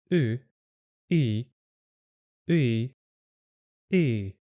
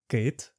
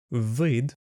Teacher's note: think of the sound U, like in the word book, and then add the sound I to it